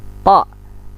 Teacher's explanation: to, ujung lidah dengan pangkal gigi atas.